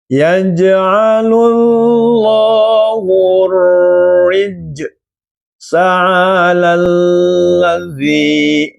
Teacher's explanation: alif lamnya dibaca samar, yang kedengarannya adalah huruf ro. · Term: alif lam sam siyah